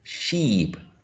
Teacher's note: when we say e represented by this symbol e as in sheep sheep the lips are tense